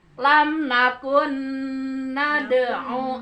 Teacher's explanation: Jadi suara nun yang pertama masuk ke nun yang kedua. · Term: idgham